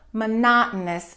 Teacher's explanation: We stress the second syllable, monotonous, and that O-U-S at the end gets reduced.